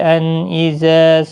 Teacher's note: نون ساکن کے بعد حروف حلقی کا حمزہ ہے، اظہار حلقی ہوگا، غنہ نہیں کریں گے